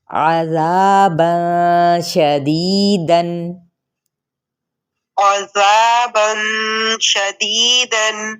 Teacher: ذا اس کو آپ نے ذا کہنا ہے، ذا کر کے یعنی ہونٹ گول کر کے نہیں ادا کرنا. اوپر کی جانب آپ کا منہ کھلے گا تو تب آپ کا الف مدہ ادا ہوگا